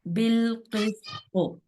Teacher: قاف اور طا حروف مستعلیہ میں سے ہے، اس کو موٹا کرنا ہے، سین کو باریک رکھنا ہے۔